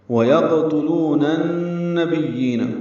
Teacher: نون کو نون سے ملا دیں گے، نون مشدد پہ غنہ ہوگا